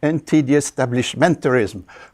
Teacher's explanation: it's so long that I'm forced to stress more than one syllable, the syllable that should be stressed by the lexicon, defined in the English lexicon, plus an extra one.